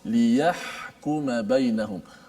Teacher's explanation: Huruf ha di situ keluarnya daripada tengah halqum. Kita sebut ha pedas.